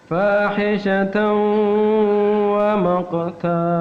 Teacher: Tanwan bertemu dengan wa. Maka dibaca fahishatan ada dengung.